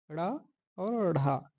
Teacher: द्विगुण या उत्क्षिप्त व्यंजन दो हैं, ड़ और ढ, जिनके उच्चारण में जिह्वा ऊपर ऊर्ध्वा में स्पर्श करके पुनः वापिस आ जाती है